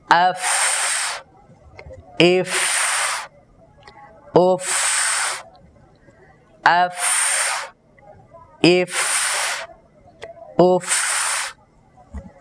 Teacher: নিচের ঠোটের প্যাট সামনের উপরের দুই দাঁতের আগার সাথে লাগাবো এমন হালকাভাবে লাগাবো যেন ভিতর থেকে একটি সিফাত আদায় হয় হামস শ্বাসের আওয়াজ বের হতে পারে শ্বাসটা যেন বের হতে পারে নিচের ঠোটের পেটের সাথে উপরের দুই দাঁতের আগাকে এরকম ভাবে লাগাবো।